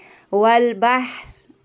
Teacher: हा की जो आवाज़ जो है वो सांस के साथ आएगी और रा को हम साकिन कर देंगे